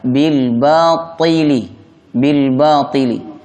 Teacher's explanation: Adapun bunyi huruf ta sifatnya tebal, maka dibaca bil batili.